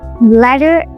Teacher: An American accent, T is changed to a soft T sound in some words, and that soft T is called flap T. Unlike a regular T, which is voiceless, the flap T is voiced, sounding similar to a D sound